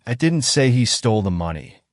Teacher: the emphasis on He suggests that someone else stole the money